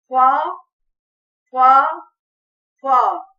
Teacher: اوپر کے دو دانتوں کی نوک جب نیچے کے ہونٹ کے اندر والے حصے سے لگے تو فا ادا ہوتا ہے